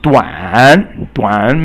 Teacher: it is 三 声 in terms of pronunciation. It's the falling and rising tone